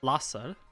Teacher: Voicing the Z is simply wrong.